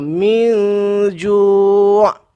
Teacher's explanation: Kita dengung seolah-olah mulut kita ke arah nak sebut huruf ja. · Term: ikhfa hakiki